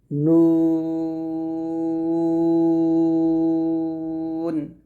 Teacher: নুন উচ্চারণ করতে হবে স্বাভাবিকভাবে বা পাতলা করে উচ্চারণ করতে হবে নুনটা যখন উচ্চারণ করবেন আপনার ঠোঁটটা গোল হয়ে যাবে ঠোঁট গোল করে নুনটা উচ্চারণ করতে হবে